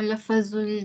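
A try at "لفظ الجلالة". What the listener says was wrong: Jangan lafazul, lafzul. Matikan fa.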